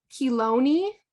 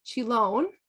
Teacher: remember CH like a k and the long e at the end